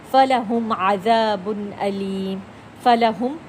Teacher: میم کا بھی اظہار ہوا ہے کیونکہ بالکل کلیئر پڑھا جا رہا ہے، وہ ساکن ہے، اور اگلا حرف بالکل عین ہم نے اس کو کلیئر کر کے پڑھا۔ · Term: اظہار شفوی